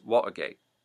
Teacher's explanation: the dropping of the T, the glottalization, where you drop the T and instead put a push. So Watergate becomes Watergate.